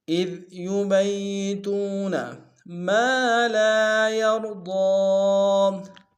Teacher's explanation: دار میں کھینچیں گے، یا کو را کے سامنے لیں گے، را کو موٹا ادا کریں گے، ضاد کو موٹا ادا کریں گے ، ضاد کے اوپر کھڑا زبر ہے ایک الف دار میں